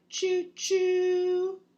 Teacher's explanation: you feel your tongue top rising and kind of touching the roof of your mouth